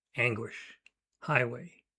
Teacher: It's a stressed syllable followed by an unstressed syllable. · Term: trochaic foot